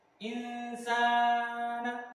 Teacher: Nun sukun bertemu dengan huruf sin, maka dibaca dengan samar dan berdengung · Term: huruf ikhfa